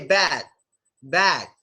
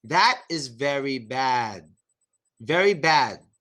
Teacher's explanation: What's stopping the sound is your tongue. Your tongue going up to the roof of your mouth stops the sound.